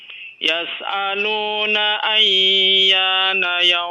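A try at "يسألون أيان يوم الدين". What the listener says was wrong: Ayyana, jangan ditahan terlalu lama ya.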